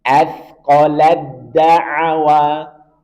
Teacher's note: ta bertemu dengan dal. Sama makhraj berbeda sifat, maka langsung masuk ke dal.